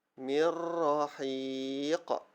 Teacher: Memasukkan sebutan nun atau tanwin ke dalam huruf ra atau lam tanpa dengung. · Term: idgham bila gunnah